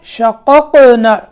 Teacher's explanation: دوسرا قاف ساکن ہے، قلقلہ کرنا ہے